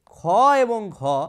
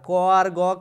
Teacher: এই যে ব্যঞ্জন ধ্বনি উচ্চারণ করতে শ্বাসবায়ু অপেক্ষাকৃত বেশি প্রয়োজন, সেগুলোকে কিন্তু বলা হয় মহাপ্রাণ ব্যঞ্জন ধ্বনি